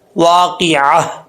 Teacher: آگے ہے واقعہ، یہاں پر سمجھنے والی بات ہے، اکثر لوگ پڑھتے ہیں واقعہ واقعہ، ایسا نہیں پڑھنا، عین اور ہا کو کلیئر کرنا ہے۔ عین کو حمزہ کا ساؤنڈ نہیں آنا چاہیے، لیکن لاسٹ پہ گول تا ہے، جب وقف کریں گے تو یہ تا ہا سے چینج ہو جائے گا، واقعہ، لاسٹ پہ ہا کا ساؤنڈ لازمی آنا ہے، ٹھیک ہے، واقعہ۔